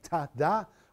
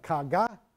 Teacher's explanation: I can make sounds here behind my teeth like ta-da, or the back of my mouth like ka-ga